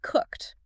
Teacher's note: Cooked ends with a hard K and D sounds slammed together.